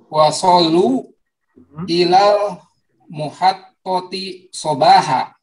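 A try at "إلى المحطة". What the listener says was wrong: Ilal mahattati, bukan muhattati Pak ya. Mahattati.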